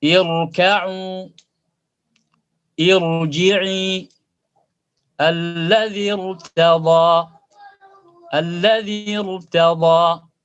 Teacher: ra sukun dibaca tebal walaupun sebelumnya harakatnya kasrah kalau huruf sebelumnya itu adalah hamzah wasal.